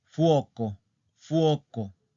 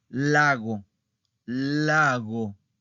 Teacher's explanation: Por ejemplo, tenemos una palabra plana que es fuoco, fuoco. La sílaba tónica está en la penúltima.